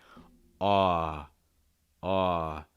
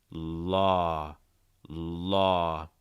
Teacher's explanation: You're opening your mouth wide. You're raising the back of your tongue. You're lowering the front of your tongue. And as always, trying to feel it in your throat, chest area. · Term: aw sound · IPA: ɔ